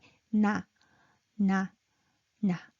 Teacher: this is nasal sound. The tip of your tongue touches the roof of your mouth.